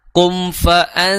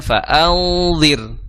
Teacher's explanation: dzal dia bukan huruf yang menaikkan pangkal lidah, jadi tipis. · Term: ikhfa yang tipis